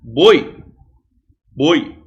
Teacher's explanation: Boi é um ditongo decrescente, porque primeiro vem a vogal e depois vem a semivogal.